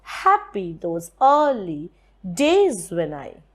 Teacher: you have two dactylic feet and one trochaic foot in between. So this gives you a trimeter where you have one dactylic, one trochaic, another dactylic.